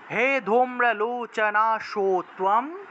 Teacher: আর অনুস্বার ম উচ্চারণ হবে